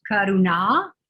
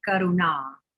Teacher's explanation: with the tip of the tongue up in the center of the mouth for the nasal arna and then uh the long eye at the end so